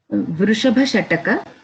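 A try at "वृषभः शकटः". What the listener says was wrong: I'm not hearing any sense of visarga in the at the end from your mouth. So you have to go visarga also.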